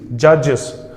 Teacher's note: Judges, es will make into the sound of is. Es will be changed into the sound of is